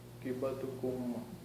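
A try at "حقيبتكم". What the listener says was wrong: का की आवाज नहीं आएगी।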